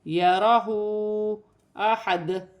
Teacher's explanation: ہا پر الٹی پیش ہے، اسے اور اوپر چھوٹی مد ہے، مد منفصل، اسے 1 سے 3 الف کی مقدار تک کھینچ کر پڑھا جائے گا